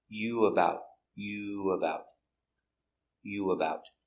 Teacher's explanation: there's like a little W sound there.